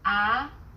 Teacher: The second tone starts with a middle pitch, then rises quickly.